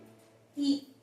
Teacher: मतलब आगे जिसमें जीभ आगे की जीभ हमारी क्रियाशील रहती है जब हम बोलते हैं तो आगे की जीभ में हमारा थोड़ा हलचल पैदा होती है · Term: अग्र स्वर